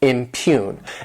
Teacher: This word has 2 syllables, and the stress is on that second syllable, impugn. And what it means is to claim that something is false, to say that, to challenge it and say that it's not true, and kind of cast doubt upon this situation or even this person.